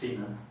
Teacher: We say find. In Danish it's written F-I-N-D-E, but it's pronounced Finna, not Finda anymore.